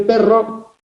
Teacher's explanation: tenemos una vibrante múltiple en el perro